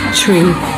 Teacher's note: Train, tree, tr. The t sounds like a ch.